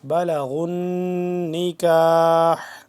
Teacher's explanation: نکاح آخر میں ہا کی آواز آنی چاہیے جبکہ ہم یہاں پہ وقف کریں گے. اگر ملا کے پڑھیں گے تب یہ آواز آخر میں اس ہا کی اور یہ والا ہا جو ہے ان سے جدا آوازیں ہیں.